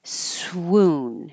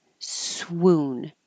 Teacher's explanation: if you don't round your lips it will sound like soon